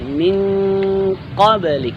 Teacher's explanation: sifat dari kaf yakni al-hamas, tetap ada bunyi hembusan suara